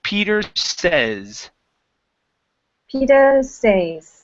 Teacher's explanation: instead of saying says give me a short e sound Peter says Peter say okay yeah so that's a short e